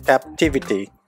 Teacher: இதில் செகண்ட் சிலபிளில் தான் ஸ்ட்ரெஸ் வருது